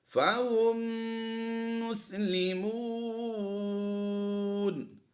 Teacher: میم ساکن کے بعد دوسری میم ہے تو ادغام شفوی کرتے ہوئے غنہ آنے کی آواز دیں گے